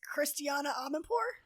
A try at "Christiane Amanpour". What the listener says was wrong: it's Christiane. It's not Christiana.